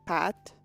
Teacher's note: we're so unused to hearing an unaspirated consonant that instead we just hear it as it being voiced